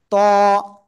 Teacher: জিবার আগা উপরে দুই দাঁতের গোড়ায় লাগাবেন লাগিয়ে মোটা আওয়াজে উচ্চারণ করবেন